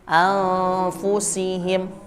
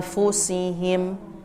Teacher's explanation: Jadi pas dengung di hidung, bibir sudah siap fa-nya. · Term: ikhfa